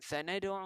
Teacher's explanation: ada satu huruf yang kita detak atau kita lantunkan, itulah dal yang merupakan qalqalah sughra